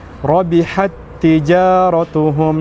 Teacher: Lantas kemudian kita baca langsung saja ya diidghamkan secara kamil atau sempurna. Kita katakan rabihat tijaratuhum seperti itu. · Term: idgham mutamathilain